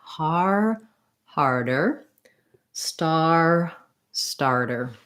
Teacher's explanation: so in both of these harder and starter again i recommend rather than thinking hard er think about har being long and then your dirt is just a short little light add-on